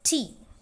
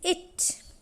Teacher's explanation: it is uttered without aspiration when it occurs at the end of the word